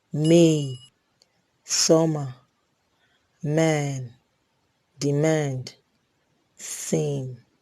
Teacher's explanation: We have the bilabial nasal. Is a voiced bilabial nasal sound.